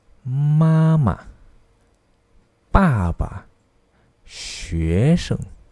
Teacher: Ini dipanggil sebagai qing sheng. Nada natural ini dibaca dengan pendek dan lembut dan tidak mempunyai tanda di atas Hanyu Pinyin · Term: nada neutral